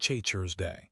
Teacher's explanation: Thursday starts with the TH. Your tongue must go between your teeth. You have to blow air. Thursday. The vowel is also different.